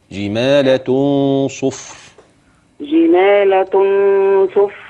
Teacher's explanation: وأخلي بالغنة تفخم عشان بعديها الصاد